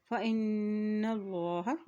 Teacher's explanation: اللہ کے نام سے پہلے زبر آ گیا تو اللہ کا نام بھی موٹا ادا کیا جائے گا